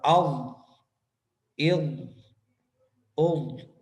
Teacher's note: طویل ہے، لمبی ہے، یعنی کہ مخرج کا بہت لمبا ہے، یعنی سب سے لمبا مخرج ضاد کا ہے، یعنی تمام داڑوں کے ساتھ حافہ لسان لگیں دونوں سائڈوں سے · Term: استطالت